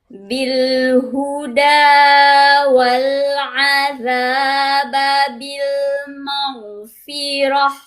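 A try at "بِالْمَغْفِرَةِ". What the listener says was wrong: Itu larinya ke tenggorokan tengah loh Bu. Roh bukan, tapi roha. Roha.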